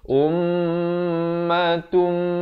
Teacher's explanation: Dia kena baca ummatum dan juga di sini kena masuk terus. Asalnya ta tanwin di depan bunyi tun, tapi bila datang mim kena bunyi tum. Tetapi jangan lupa dengungkan 2 harakat.